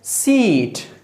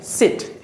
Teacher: जब आप इसको लेंथ देते हैं तो ये बनता है सीट। ओके, जब आप उसको उसका जो लेंथ है ख़त्म कर देते हैं तो फिर बनता है सिट।